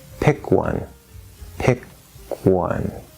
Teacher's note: you're releasing the k into the w pick one and it's a very soft or weak k rush